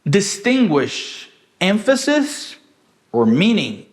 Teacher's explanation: Eu não falei emphasis or meaning. Esse or, ele não tem um conteúdo, ele só tem uma função, né, de falar que é esse ou esse. Então ele foi reduzido na minha frase. Eu falei assim, ó, distinguish emphasis or meaning.